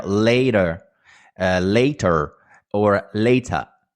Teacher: you do not pronounce the r